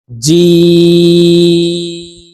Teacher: জিম হরফ জিহ্বার মধ্যখান থেকে উচ্চারণ করে তিন আলিফ টেনে পড়বো